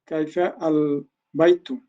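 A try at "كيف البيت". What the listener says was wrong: কাইফাল বাইতু, এমনি এরকম হয় না, আরবিতে কাইফা আল বাইতু হয় না, কাইফাল বাইতু, সরাসরি মিলায় ফেলবেন।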